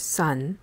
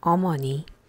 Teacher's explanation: When you compare the O sound in the word sun with the Korean word 어머니, these sounds are not the same, and you will notice that the Korean O is formed farther back, very close to the throat